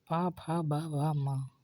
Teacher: दोनों ओठों से ही बोले जाते हैं